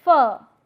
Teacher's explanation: your lower lip raises towards the Upper Front Teeth and then you find that there is an obstruction taking place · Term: labio Dental